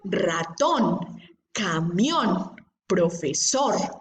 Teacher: Tienen esa fuerza de voz en la última sílaba